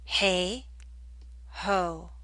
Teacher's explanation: it's the O and ho that makes the back of your tongue high in contrast when you say hey the a makes the front